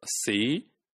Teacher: the tongue is very close to your roof of the mouth your palate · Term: tongue height